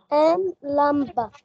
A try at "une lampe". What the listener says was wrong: لا مش لمبة مفيش ده لمبة دي بالعربي ان لمبة قولها تاني ان لمبة